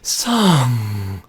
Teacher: But if you say the word song in that extremely weird and awkward breathy voice, song, you notice at the beginning of the word song that, there's breath escaping your throat, but at the end, song, that air is cut off. That is your glottis.